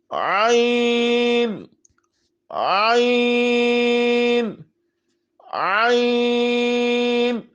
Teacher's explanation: گلے کے درمیان والے حصے سے عین عین عین. غین غین فا فا فا.